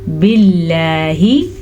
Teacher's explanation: लफ्ज़ अल्लाह को हम बारीक पढ़ेंगे क्योंकि लफ्ज़ अल्लाह से पीछे वाले हर्फ के नीचे ज़ेर है